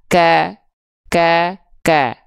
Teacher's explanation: karena kalau huruf Kaf itu Walaupun dia makhrajnya di Pangkal lidah ketika momentum vokal a-nya keluar dari harakat fathahnya pangkal lidahnya turun sehingga yang keluar tetap a